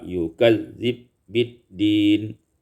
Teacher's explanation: idghamul ba fil ba, diidghamkan ba pada ba